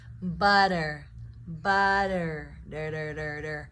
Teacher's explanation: the pronunciation with a flap T is the T turns into a D to lessen the pronunciation, lessen the sound, and to have it roll off the tongue better.